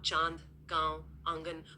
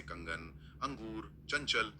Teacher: यहां ध्वनि एकदम तेज और स्पष्ट रूप से नाक से आती है। तो चंद्रबिंदु एक फैली हुई गूंजती हुई ध्वनि है। और बिंदु एक तीखी नासिक्य ध्वनि।